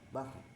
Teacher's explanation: Ada bunyi ro dengan sifat takrirnya ya, berulang bahr. Nah, gitu ya.